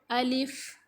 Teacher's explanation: first letter الف، جو کہ ادا ہوتا ہے منہ کے خالی حصے سے